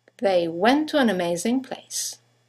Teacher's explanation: one ending with a t, the next one starting with a t, they run into each other